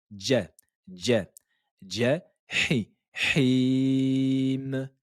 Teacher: Ne dites pas ja, ja, mais c'est comme s'il y avait un D et un J. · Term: la lettre jim